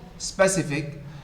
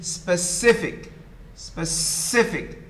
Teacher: The second syllable is the one stressed.